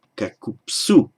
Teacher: And also in the locative plural, ending in su, you can't have kakub su. By sandhi, the preceding b just has to change to a p.